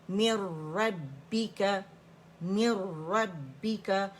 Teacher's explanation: یہاں پہ complete merging without غنہ ہو رہا ہے کیونکہ را مشدد ہو گیا